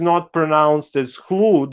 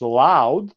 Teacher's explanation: Hlud today is not pronounced as hlud. We lost h, so it's loud.